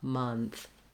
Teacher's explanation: When we get to month, this is a little bit more challenging because we have the nth at the end, month. And letter O says vowel schwa. So I'll rewrite that with a U for you, month, to help you think about that sound, keeping this, it's central, no rounding, nothing like an O, but rather an month.